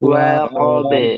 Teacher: wa tipis wunya tipis qof tebal ba tipis